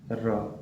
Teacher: जब हम लोग र को उच्चारण करेंगे तो क्या होता है, जिह्वा में हमारा कंपन होता है। र, तो जीभ हमारा क्या होता है, कंपन कर रहा है, तो इसलिए इसको क्या बोलते हैं हम लोग, लुठित व्यंजन कहते हैं।